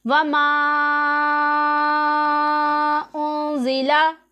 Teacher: यहाँ पर भी मद्दे मुनफसिल है और यहाँ पर भी मद्दे मुनफसिल है। इसे हम 2-2.5 अलिफ के जितना, यानी 4-5 या फिर 6 हरकत की मिकदार तक खींच कर पढ़ेंगे।